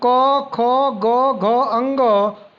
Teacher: कंठ उच्चारित व्यंजन है